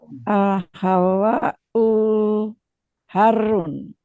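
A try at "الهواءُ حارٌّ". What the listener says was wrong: Panjang pendeknya coba Bu dilatih lebih teliti dikit.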